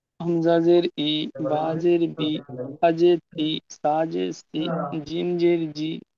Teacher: জেরের আওয়াজ নিচের দিকে যায় এবং জেরকে মোটেও টান দেওয়া যাবে না